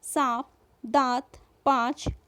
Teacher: वायु नाक तथा मुख दोनों से एक साथ निकलती है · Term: चंद्र बिंदु